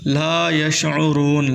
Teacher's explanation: لام کے آگے واو مدہ ہے، لام کو تھوڑا سا کھینچیں، 1 الف کے مقدار